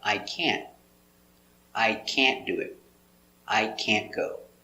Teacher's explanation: We don't say I can't. We stop with the T up. We put the tongue up. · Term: stop T